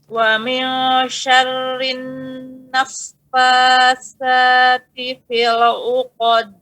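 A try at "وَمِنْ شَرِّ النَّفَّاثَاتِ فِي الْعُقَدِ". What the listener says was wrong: Nah, jangan dijeda. Ya, tidak ada jeda di situ, langsung.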